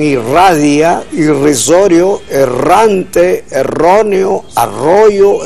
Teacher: entre vocales, como ocurre en posición inicial de palabra, la R, que ese es el nombre, tiene un sonido vibrante y doble, como en irradia, irrisorio, errante, erróneo, arroyo, etc.